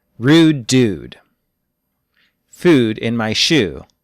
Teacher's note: i'm from the west coast of the united states so in my original accent ooh sounds about the same as the japanese uh sound